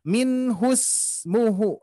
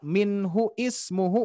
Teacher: Karena hamzah wasol ini akan hilang, akan tidak dilafalkan ketika diwasolkan.